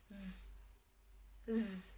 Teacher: alveolar frikatif atau alveolar dengan cara geseran